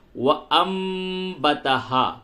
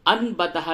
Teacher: علامت قلب کے طور پہ یہ چھوٹی سی میم لکھی ہوئی ہے، یعنی نون کی آواز کو میم سے بدل کے پڑھیں گے. وَأَنبَتَهَا، انبتہا نہیں بولیں گے، الف حمزہ نون زبر ان نہیں ہوگا بلکہ حمزہ میم زبر ام.